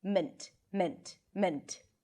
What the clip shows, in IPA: mənt